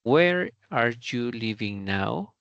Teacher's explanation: la pregunta en su entonación empieza fuerte y se va debilitando · Empieza fuerte y la entonación va debilitándose. Es decir, es algo que conocemos como falling intonation.